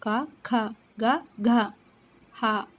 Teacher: వివిధ ముఖయంత్ర అవయవాల నుండి పుట్టే భాషా ధ్వనులు అకుహ విసర్గ కంఠ్యః అంటే అంటే అ ఆ కు అంటే క వర్గం క ఖ గ ఘ హ విసర్గ కంఠం నుంచి మనము అవి పలికేటప్పుడు కంఠం నుంచి పలుకుతాం కాబట్టి కంఠ్యాలు